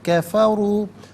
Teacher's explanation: ہم پڑھیں گے وَيُجَادِلُ الَّذِينَ كَفَرُوا، را پر پیش ہے، را کو پر کر کے پڑھا جائے گا